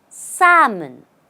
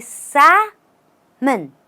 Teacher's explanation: the L here does not exist in the pronunciation.